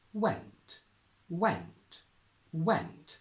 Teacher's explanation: If you look it up in a dictionary and click on the pronunciation button, you will hear went, went, went, with a very strong up and down movement on intonation